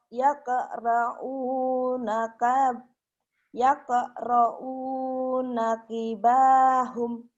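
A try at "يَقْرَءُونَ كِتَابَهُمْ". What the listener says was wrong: Salah. Kita bukan kibahum. Kitahum. Banyak ketinggalan. Kitabahum. Yaqra'una kitabahum.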